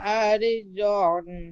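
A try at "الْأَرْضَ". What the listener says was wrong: আরে জ হবে না, আর দ, আরে জ হবে না, আর দ, আর হামজা র হিসাবে আর রাটি পুর হবে।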